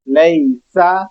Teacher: सीन की आवाज सीटी पैदा करनी है